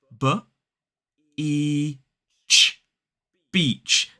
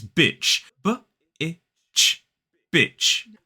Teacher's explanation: It has the long E vowel sound. We need to hold that sound.